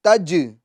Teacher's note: اس میں جیم میں قلقلہ ہوگا آواز لوٹے گی